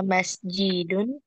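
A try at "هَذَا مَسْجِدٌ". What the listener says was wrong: Hadza masjidun. Tidak ada kata tanya, intonasinya.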